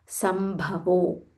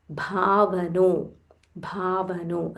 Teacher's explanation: There is a half ma followed by full Mahaprana bha.